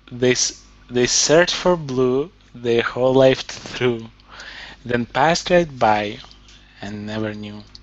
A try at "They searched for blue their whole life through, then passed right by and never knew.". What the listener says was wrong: Very good everything. Intonation, pronunciation, nicely done.